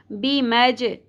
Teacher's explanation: جیم ساکن پہ قلقلہ ہوگا باؤنسنگ ساؤنڈ کی طرح